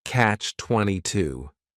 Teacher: It's a compound noun. The word catch is just 1 syllable, and then 22 is 3 syllables, and the stress is on that final syllable, catch-22. The word comes from a famous book by Joseph Heller, which is titled Catch-22.